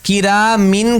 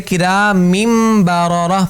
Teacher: نون ساکن بھی اور تنوین بھی دونوں میم سے بدل جائیں گے